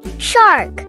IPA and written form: ʃɑːrk (Shark)